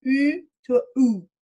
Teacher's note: this oo vowel, as in the word hood, basically it, we say it fronted, it means that it was produced with the tongue in a more of a front position over time